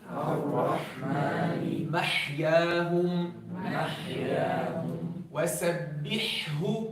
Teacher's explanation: So, the ha, we bring the epiglottis back, but not as much as we do in the ayn.